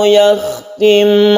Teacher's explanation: Fa yasha'illahu yakhtim 'ala qalbik. Yakhtim, khoknya itu harus terasa, khoknya di tenggorokan